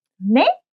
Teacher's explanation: if you didn't hear something properly, you can say 네 with a rising intonation.